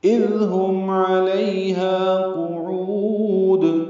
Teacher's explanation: علیہا عین وسط حلق سے، لی یلین نرمی سے، ہا الف مدہ 2 حرکات لمبا.